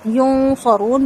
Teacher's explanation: نون ساکن کے بعد صاد ہے، یہاں پر اخفا ہوگا